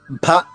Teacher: కదా ఆ ఒత్తు భని మహాప్రాణం అంటారు సంస్కృతంలో మహాప్రాణ అక్షరాన్ని నొక్కి చెప్పాలి మహాప్రాణం అని ఎందుకు పేరు వచ్చిందంటే మనకి నోటి ఆ అక్షరం పలికినప్పుడు నోటి నుంచి ఎక్కువ శ్వాస బయటికి వెళ్తుంది